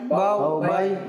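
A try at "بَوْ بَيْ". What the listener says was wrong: বাউ বাই টানা যাবে এভাবে বলা যাবে না বাউ বাই এভাবে বলা যাবে না ঠিক আছে বাউ বাই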